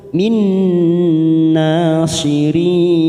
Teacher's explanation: ada nun sukun bertemu nun, namanya idgham bigunnah